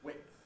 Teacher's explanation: Most people, I think, say it as width, with starting voiced but then going voiceless, width, although some people assimilate it and make the whole thing voiceless, width. And those who basically say width can also pronounce it with a glottal stop, thus width.